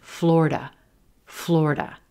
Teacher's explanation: And you will hear that sometimes, but most of the time, this is going to be a two-syllable word. That middle syllable is dropped. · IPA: ˈflor-də